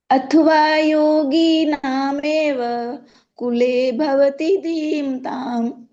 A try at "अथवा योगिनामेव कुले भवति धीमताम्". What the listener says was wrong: आपको घी पर थोड़ा ज्यादा जोर लग गया, इसलिए बड़ी घी बोली गई। इसलिए अथवा योगिनामेव कुले भवति धीमताम्।